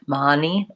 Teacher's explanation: on the vowel schwa, like as in fun and such, that Russians tend to do more of an ah vowel. So your word money might sound more like mani, with the two open of a vowel. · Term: AA vowel